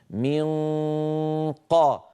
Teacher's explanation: المفروض هذا اقصى اللسان يقفل تماما · ان القاف والكاف مخرجهما بعيدان في اقصى اللسان فننتقل اليهما مباشره من غير ضغط من قا من قا من